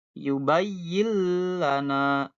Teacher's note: Ya, nunnya hilang jadi lam, langsung ke lam ya.